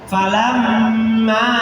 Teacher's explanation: ini adalah gunah ditahan dua harakat